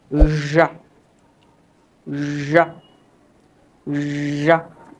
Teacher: জিহ্বাটাকে বাঁকা করে উপরে শক্ত তলাতে না লাগিয়ে বাতাসটাকে বের করতে হবে, একটু সাউন্ড করতে হবে। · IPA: /ʒ/